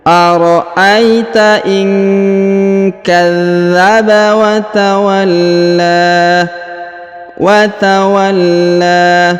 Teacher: Huruf la ditahan dan ditekan karena terdapat tanda tasdid, lalu dipanjangkan 2 harokat karena di atasnya terdapat alif kecil ya.